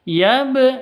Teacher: kalau sukun maka disebut dengan Qalqalah harus dipantulkan harus dipantulkan